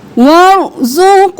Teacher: را موٹا، قاف بھی موٹا، قاف قلقلہ